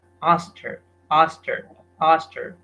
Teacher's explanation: So simply the K and the H are missed out. So instead of saying asked, he said us, and then her, it is transformed as asked her, asked her, asked her.